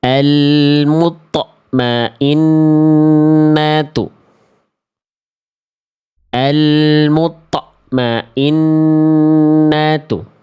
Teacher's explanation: Jadi kerasa seperti ada hentakan th sukunnya itu ya.